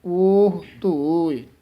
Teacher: ਲਈਆ ਉਹ ਧੋਏ, ਉਹ ਹਾਹੇ ਦੇ ਹੂੜਾ ਲਾ ਕੇ ਨਹੀਂ ਬੋਲਣਾ, ਊੜਾ ਖੁੱਲੇ ਮੂੰਹ ਵਾਲਾ ਹੈ।